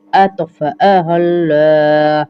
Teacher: اس آ کو کھینچیں گے نہیں اور ات پہ قلقلہ کریں گے